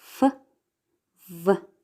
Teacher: Labiodental sounds are produced with the upper teeth and the lower lips such as f, v.